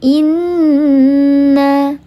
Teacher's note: Maka dibacanya dia didengungkan 3 harakat, wajibul gunnah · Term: gunnah musyaddadah